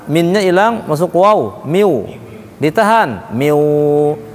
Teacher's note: Pastikan ke hidung, miu, masuk ke hidung. Kalau nggak ke hidung, salah bacanya.